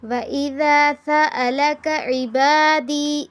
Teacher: سیٹی کی آواز آ جائے، سین ہے